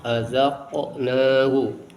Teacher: ada huruf yang dibaca memantul qalqalah yaitu qaf